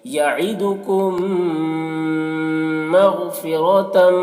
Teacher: میم ساکن کے بعد میم ہے تو میم کو میم سے ملا کر غنہ کے ساتھ پڑھیں گے، اس کو ادغام شفوی کہتے ہیں۔